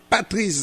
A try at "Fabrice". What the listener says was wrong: En fait, vous avez dit Patrice, puis c'est Fabrice. C'est Fabrice.